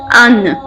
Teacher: لام، نون اور را حروف طرفیہ کہلاتے ہیں۔ جب زبان کا سامنے والا کنارہ اوپر کے دانتوں کی جڑ والے تالو سے لگتا ہے تو یہ حروف ادا ہوتے ہیں